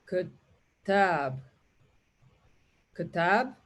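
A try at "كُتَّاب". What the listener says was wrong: Give it a dhamma, its word. Kutab. Okay, kutab.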